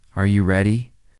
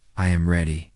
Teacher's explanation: when a native speaker asks a yes or no question like, Are you ready? the pitch of their voice goes up at the end.